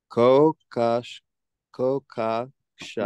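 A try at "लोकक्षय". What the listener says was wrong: Low. Starts low. So you say it together. Loka, kshaya, krit.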